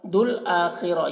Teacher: الف کو نہیں پڑھا جائے گا صرف لام کو پڑھا جائے گا